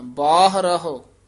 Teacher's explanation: ਅੰਦਰਹੁ ਬਾਹਰੋਂ ਨਹੀਂ ਕਹਿ ਦੇਣਾ ਦੋਵੇਂ ਹ ਬੋਲਣੇ